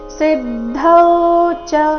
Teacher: ಸಿ ಮೇಲೆ ಆಘಾತ ಗಮನಿಸಿ ಸಿದ್ದೌಚ ಚರಣದ ಕೊನೆಗೆ ಬಂದಿರೋ ಚ ರಸ್ವ ಬರಬೇಕು ಅಲ್ಲಿ ಚ ಇದೆ ಚ